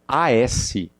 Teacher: olha as barrinhas, ó, A e o som de Z. Então, ó, ele vai vibrar.